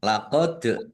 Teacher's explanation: dal sukun bacaan qalqalah ya dibaca memantul ditampakkan pantulannya